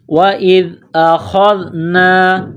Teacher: جس طرح انسان گلے سے بلغم نکالتا ہے اسی طرح اس خا کو نکالیں گے